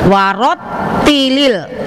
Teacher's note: jadi cara bacanya ditekan, ada naber, ada hentakan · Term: tasdid